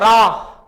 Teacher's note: अगर रा हम बोलेंगे तो हमारी जीभ थरथर आएगी और कपकप आएगी · रा वर्ग के अंतर्गत आता है, तो लुंठित व्यंजन यहां पर मित्रों रा है। अगर रा हम बोलेंगे तो हमारी जीभ थरथराएगी और कपाएगी, तो रा, तो यही हमारा लुंठित व्यंजन कहलाता है।